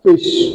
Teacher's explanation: हम महसूस कर सकते हैं कि हमारा नीचे वाला होंठ हमारे फ्रंट टीथ के साथ टच होता है, तब जाके साउंड प्रोड्यूस होती है, फिश। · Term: लिबियोडेंटल्स